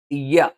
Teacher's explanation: യ നാവിന്റെ മധ്യഭാഗം മേലെ അണ്ണാക്കിലാണ്.